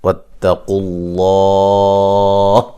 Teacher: وقفاً بڑی مد کے ساتھ پڑھ سکتے ہیں